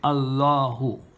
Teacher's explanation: If it comes after fatha, or if it comes after dhamma, it becomes, the lam that is mushaddada becomes tafkhim. It is pronounced with a heavy, thick sound that gives an aw sound.